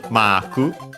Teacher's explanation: Should be accented, and it is like in English on the ma, high and everything else low.